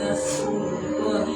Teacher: Kemudian lafaz Allah dibaca tebal dan dipanjangkan 2 harakat.